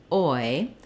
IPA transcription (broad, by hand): ɔɪ